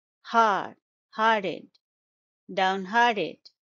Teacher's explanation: It's a three-syllable word. Stress is on the second syllable